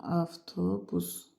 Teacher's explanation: V samiti F kimi tələffüz olunur.